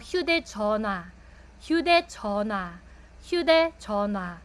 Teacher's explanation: Pero pag dito po sila sa gitna po ng mga word, yung H po minsan nawawala yung H sounds po niya. So, you might notice na ang basa ko po dito, 휴대전화, 휴대전화, 휴대전화.